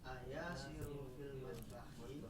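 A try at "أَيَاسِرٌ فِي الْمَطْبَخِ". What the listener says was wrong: ayasirun, jangan lupa tanwinnya ya, bukan ayasiru ya. Nanti kalau ayasiru seperti yang saya sampaikan itu nanti jadi manggil. Yasir. A-nya di situ nanti takutnya jadi a munada ya, harfun nida. Ayasirun fil matbahi, apakah Yasir ada di dapur?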